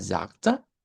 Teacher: Esta palabra aquí, lo interesante es que esta G la cambiamos por una K, sagte, y claro, pronunciamos una Schwa al final.